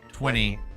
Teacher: in Canadian English T is changed to D or sometimes it just disappears